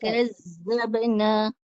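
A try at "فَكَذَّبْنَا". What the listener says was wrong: Masih ada desiran lagi tu.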